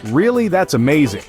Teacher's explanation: an American speaker would typically stress the word really and then use a falling intonation on amazing to express surprise and interest